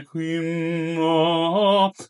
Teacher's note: I would double the M there